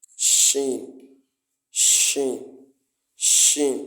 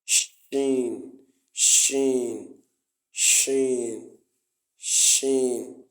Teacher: so as far as sh is concerned it's from the it's it's actually pronounced from the middle of the tongue